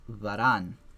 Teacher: the stress goes on ran because it's heavy